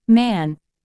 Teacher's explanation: is the sound in the word man to produce this sound the speaker closes their lips blocking the air flow through the mouth and allows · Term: nasal sound